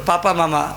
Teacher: इसमें दांत की जरूरत नहीं है, इसमें दोनों होठ सट जाएगा तो पापा मामा आवाज आ जाएगा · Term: ओष्ठ वर्ण